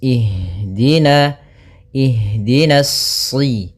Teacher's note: pada lafal ha usahakan di sini mengalir nafasnya dan lembut. Ada namanya jaroyanu an nafas.